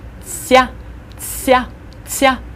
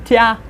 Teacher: when you say te and ya together, you should kind of insert a little bit of an S sound to it. Soften it and put an S sound, and you get a tsya, tsya, tsya.